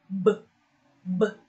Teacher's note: You can feel the vibration, and that means this is under voiced consonant.